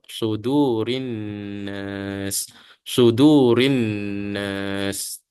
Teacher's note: Uh, Kebiasa orang baca kadang-kadang sad ini dibaca dengan hampir kepada sin ya. Sad ini lebih lebih tebal daripada sin